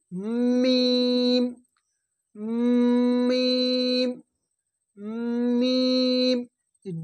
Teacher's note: মিমের মাখরাজ হচ্ছে দুই ঠোঁটের ভিজে অংশ হইতে উচ্চারণ হয়, এই দুই ঠোঁটের ভিজে অংশ, এই এই মিম মিম মিম, দুই ঠোঁটের ভিজে অংশ হইতে উচ্চারণ হয় মিম।